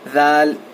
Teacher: ذال پڑھتے وقت زبان جو ہے باہر آنا چاہیے · ذال جب ہم پڑھیں گے تو زبان تھوڑی باہر آنا چاہیے اور دونوں دانتوں کے کناروں کو لگنا چاہیے